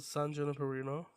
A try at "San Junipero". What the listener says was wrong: Where's that N coming in? You keep saying Juniperino. Where's that N coming in from? You're saying N at the end. It's Junpero. R-O, not N-O, motherfucker.